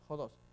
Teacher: el espíritu rudo mirando a la derecha, entonces hace que suene como una pequeña J